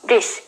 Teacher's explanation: when we make the dress vowel in the New Zealand English, it sounds like the I sound in RP English. The I sound is produced when the tongue is in a high position where it's close to the tooth ridge, which allows the air to flow to the mouth from the trachea without any blockage.